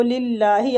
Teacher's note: اللہ کے لام کو ادھر باریک پڑیں گے، اللہ کے لام سے پہلے زیر آ رہا ہے